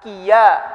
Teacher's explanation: Ya di situ dia bukan keluar dari jawf, tapi dia keluar dari tengah lisan.